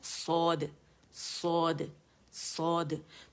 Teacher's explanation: صاد جب ادا کرتے ہیں تو زبان کی جڑ اٹھائی ہوئی ہے